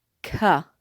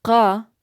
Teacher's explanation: When you say the letter K in English, ka, that is the back of your tongue touching the roof of your mouth. The qa is the back of your tongue touching the back of your throat.